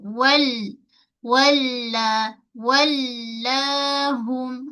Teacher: Lam tu mempunyai sifat mengalir sedikit ataupun sifat tawas.